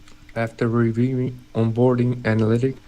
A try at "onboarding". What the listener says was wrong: Onboarding, I would say onboarding. So I put the stress on the on instead of the board. Onboarding.